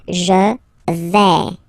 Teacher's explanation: when you combine this A, I, you get the sound E, really open